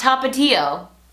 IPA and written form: tɑp.ə.´ti.o (Tapatío)